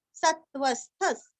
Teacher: स गभस्तिनेमिः सत्वस्थस् सत्व स और त्व के ऊपर आघात स्थ स्थ का उच्चारण भी आधा अच्छे से करना है और विसर्ग का आधा स